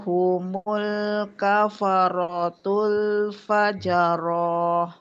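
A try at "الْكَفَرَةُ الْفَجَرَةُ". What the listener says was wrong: Jangan panjang. Fajaroh. Kan nggak ada pemanjangnya. Nggak ada alif. Pendek ya.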